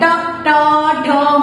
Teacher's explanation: मूर्धा यानी कि हमारी टंग होती है वो थोड़ा मुड़ के फिर हमारे तालु को टच करती है